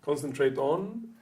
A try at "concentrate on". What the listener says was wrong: You're still splitting it. Ton. It doesn't have to be fast.